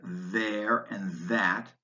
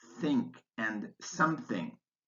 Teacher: the th sound whether it's voiced in words like there and that or voiceless in words like think and something